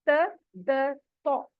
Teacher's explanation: तीनों का मखरज सेम ही है, इसलिए हमने एक ही फिंगर पे इनको रखा हुआ है, यानी जबान की नोक। जबान की नोक को ऊपर के दांतों की जड़ से लगाइए तो फिर ये अदा होता है।